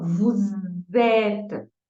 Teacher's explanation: Vou usar esse S aqui com o som de Z, tá? Então, terminou um S, começou uma vogal, o meu S, o meu som de S vira Z.